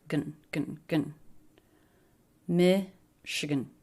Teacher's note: And there's a schwa in the unstressed last syllable.